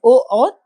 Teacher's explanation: ओ और औ का उच्चारण स्थान कंठ और ओष्ठ। कंठ और ओष्ठ से बोले जाने वाले ये वर्ण होते हैं